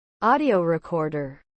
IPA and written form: ˈɔːdiəʊ rɪˈkɔːrdər (Audio Recorder)